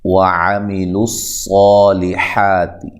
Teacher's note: عین کو واضح نکالنا ہے، لام کو موٹا نہیں کرنا ہے، صاد کو خوب موٹا کر کے پڑھنا ہے، مد اصلی ہے، حا مد اصلی، تا کو باریک، اولئک۔